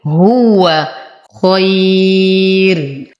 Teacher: نقف على الراء بالترقيق لأن ما قبلها ياء ساكنة